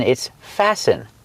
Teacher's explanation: Remember, with the verb fasten, the T is silent. It's not fasten, it's fasten.